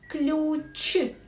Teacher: Звук ч в українській мові завжди твердий